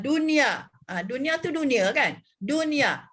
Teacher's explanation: nak menjelaskan nun mati itu tidak didengungkan apabila bertemu dengan ya yang perkataannya satu perkataan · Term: izhar mutlak